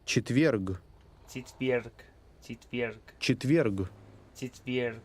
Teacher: notice the rolling R in that word